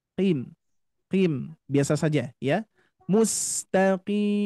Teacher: Huruf qaf itu ketika kasroh tidak ditebalkan. Karena huruf qaf ini termasuk huruf yang tafkhim ketika harokat fathah dan dhammah.